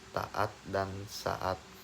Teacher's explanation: Glotalisasi adalah proses pernyataan bunyi hambat pada glotis. Glotis tertutup rapat saat artikulasi primer berlangsung.